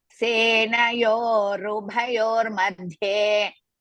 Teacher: That dhye you have to stress. Bha you have to stress Mahaprana.